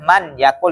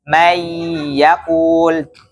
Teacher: Nah, itu yang yang dinamakan dengan idgham, yaitu langsung masuk. Ya, nun sukunnya tidak dibaca ya, melebur ya, langsung masuk ke ya-nya.